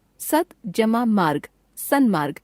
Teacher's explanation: व्यंजन त जमा व्यंजन म, त का न में परिवर्तन।